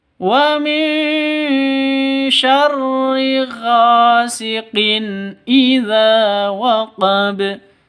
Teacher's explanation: gha panjang 2 ketukan karena ada alif diawali dengan fathah